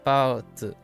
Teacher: If you have a one high tone into a neutral, the neutral gets cut short.